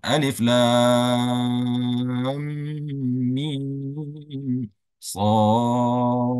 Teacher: baca huruf yang keempat yaitu huruf shad. Dan juga dipanjangkan selama 6 harakat.